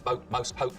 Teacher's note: the vowel sound in boat, most, pote, starts with the tongue further forwards in the mouth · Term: goat fronting